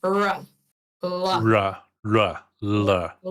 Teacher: It's a retroflex, so it turns r and l, which we pronounce as alveolar, post-alveolar, and it turns it into a retroflex. It makes it a bit more dark.